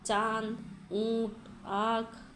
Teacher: इसका उच्चारण नाक एवं मुंह से किया जाता है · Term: अनुनासिक